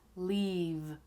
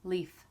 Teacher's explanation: The only real difference is the vibration of the vocal cords. With the V sound, your vocal cords vibrate. With the F sound, they don't.